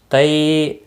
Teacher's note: یالین ہے، تئی نرمی کے ساتھ تھوڑا کھینچ کر ادا کریں گے